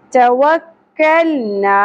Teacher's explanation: پہلے زبر حرف لین نرمی سے ادا کرنا ہے وعلیہ توکلنا ٹا اور کف باریک ہونے چاہیے